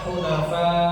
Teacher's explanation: Kemudian pada kata hunafa ya dipanjangkan lima harakat.